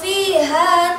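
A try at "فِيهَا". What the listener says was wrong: hanya kurang ke dalam ha fiha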